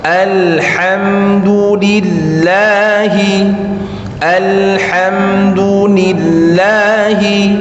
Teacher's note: Biasanya ada orang baca alham, kemudian lillahi, kelebihan dari lillahnya, 2 harokatnya lebih. Hak tipis, lillah jangan lebih dari 2 harokat.